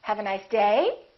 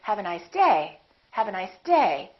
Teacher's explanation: my voice is still going down even though i'm stressing the word · I'm still going to emphasize the word day but I'm not going to make my pitch go up